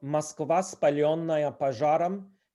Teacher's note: O is also reduced to a, except in word initial position when it's pronounced like a stressed a.